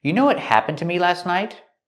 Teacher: We hear that T in what is a stop T.